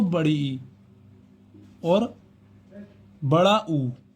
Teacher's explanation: इनके उच्चारण में सबसे कम मुख खुलता है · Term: समृत स्वर